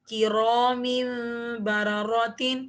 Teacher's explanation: غنہ کر کے، جیسے من بعدها انبوریکا، اب یہاں پر را کے نیچے زیر ہے، اس لیے میں نے اس را کو باریک پڑھا ہے، انبوریکا امدا بعیدا قولا بلیغا مرحبا بهم سبأ بنبأ کرام بررت، یہاں پہ را پہ تمام جگہ زبر ہے، اس لیے را کو موٹا پڑھا ہے